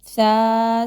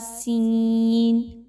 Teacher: first والا جو ہے اس میں آپ نے سیٹی کی آواز کو روکنی ہے، بہت نرمی کے ساتھ پڑھنا ہے، اور سین میں آپ نے سیٹی کی آواز کو لانا ہے